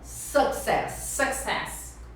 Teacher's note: E a sílaba forte na primeira, é a primeira sílaba.